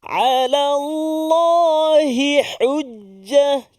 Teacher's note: perpindahan daripada huruf ha kepada huruf ha. Ha pangkal kepada ha tengah rongga kerongkong kita.